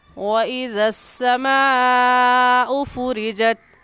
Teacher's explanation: کیونکہ حروف مدہ کے بعد حمزہ اسی کلمے میں ہے، اس وجہ سے اس مد کو مد متصل اور مد واجب کہیں گے، اور اس مد کو ہم 4 الف کے برابر کھینچیں گے، اس سے کم یا زیادہ نہیں کھینچیں گے